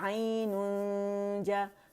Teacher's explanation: جیم بھی یہاں سے ادا ہو رہا ہے اوپر غار میں, اس کے قریب ہم جائیں گے, ٹچ نہیں کریں گے. جب ہم کاملہ گریڈ کا غنہ 2 کاؤنٹ کا کر دیں گے پھر جیم کو ٹچ کریں گے, اور پھر جیم کی آواز کو الف کھینچ بھی رہا ہے ساتھ میں. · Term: اخفا